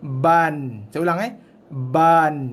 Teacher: So dalam kes ini, ba kita bunyikan dengan 1 harakat, baru kita masukkan bunyi n.